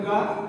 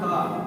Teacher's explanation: इसी प्रकार से महाप्राण व्यंजन में जिन व्यंजनों के उच्चारण में मुख से अधिक हवा निकलती है, तो मुख से अधिक का के अपेक्षा खा में मुख से अधिक हवा निकलती है